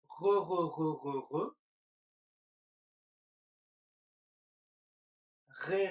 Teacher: c'est un petit peu comme quand on fait des gargarismes mais moins fort